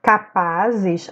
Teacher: a sílaba tônica é o pá, ela também está na penúltima sílaba, ó, última, penúltima, portanto, ela também é uma paroxítona.